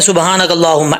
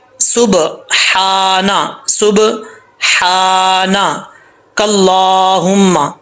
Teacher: یہاں پہ دیکھیں ہا باریک ہے اور سین جو ہے وہ باریک ہوتا ہے، اس کو باریک پڑھنا ہے سیٹی کے ساتھ، اور ہا کو کلیئر ساؤنڈ پڑھنا ہے۔ اس ہا کا تعلق حلق سے ہے، سینے سے نہیں ہے۔